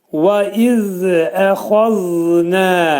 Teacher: Və iz əxazna vəf hərfini deyərkən dodaqlar qönçələnir